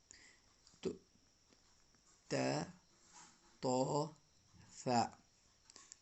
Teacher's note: سامنے کے اوپر کے دو دانت جسے ثنایا علیا دانت کہتے ہیں، اس کو لگاؤ تو سا نکل جاتا ہے بالکل نرم انداز سے